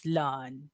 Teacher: Stretching the initial half and pulling your tongue back for the R.